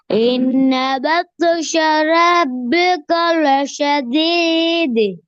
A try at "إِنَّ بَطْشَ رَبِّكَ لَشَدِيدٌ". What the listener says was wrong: நீட்டி ஓதுறது போதாது. நீட்டி ஓதுறது போதாது.